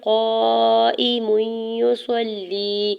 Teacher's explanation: قاف کے اوپر زبر ساتھ الف ہٹا ہے اس کے اوپر مد متصل ہے 4 سے 5 حرکت کھینچ کے ادا کریں گے · گے، حمزہ کی زیر کو بغیر کھینچے ہوئے ادا کریں گے، میم کے اوپر دو پیش کی تنوین کو یا مشدد کے ساتھ ملاتے ہوئے ادغام مع غنہ کا رول اپلائی ہو رہا ہے ، یا مشدد پہ غنہ بھی کریں گے، یا کی پیش